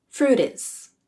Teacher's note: Fruit used a flap.